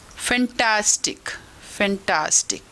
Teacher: फैंटास्टिक ख़त्म करने तक हमारी टोन धीरे हो गई, नीचे की तरफ, मतलब फॉलिंग टोन हो गई।